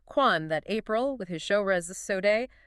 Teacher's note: the A in April was way broader, more like as in father